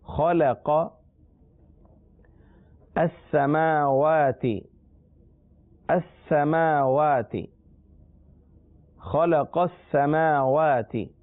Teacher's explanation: خا اور قاف حروف مستعلیہ میں سے، لام مستعلیہ میں سے نہیں ہے، لہذا خا اور قاف کو پر پڑھنا ہے